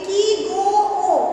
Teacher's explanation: ও অর্থাৎ ও স্বরটা টেনে উচ্চারণ করা হচ্ছে এটাকে বলা হয় প্লুতস্বর